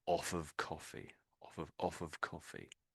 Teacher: So if you're off of something, it means you're not having it anymore. So these sort of two words you could sort of put close together. You sort of say them as if they were one word.